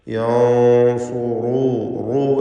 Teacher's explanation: അതുപോലെ റാഇനെ തഫ്ഖീം ചെയ്യണം. യൻസുറൂ, റൂ എന്ന് തടിപ്പിച്ചുള്ള റാ ഉച്ചരിക്കണം